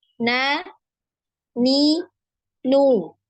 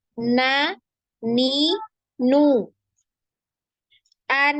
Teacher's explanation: Ya di hidung ada getaran ya ada getaran ada suara yang keluar dari hidung